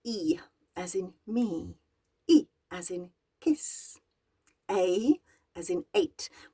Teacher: it's the front of the tongue that raises up and makes the shapes to make these vowels happen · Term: front vowels